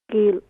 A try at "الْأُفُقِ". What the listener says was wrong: کل نہیں ہوگا، قاف موٹا قاف ہے تو قل ہوگا.